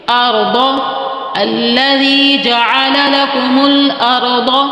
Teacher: جعل ادائیگی جیم زبر جا عین زبر ع، جعل لکم الارض، یہاں را ساکن سے پہلے زبر ہے تو اس کو موٹا پڑھیں گے